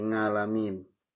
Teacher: di Jawa itu kalau ain itu kadang jadi ngain ya